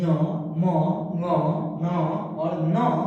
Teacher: पांचों वर्गों के पंचम वर्ण का उच्चारण स्थान नासिका से यानी नाक के सहयोग से भी होता है, इसलिए इसको कहते हैं नासिका।